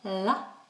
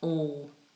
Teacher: We have a light L, la, and we have a dark L, all.